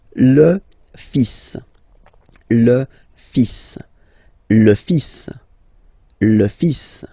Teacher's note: even if you've got this L, well, basically you don't pronounce it, and then strangely you pronounce the final S.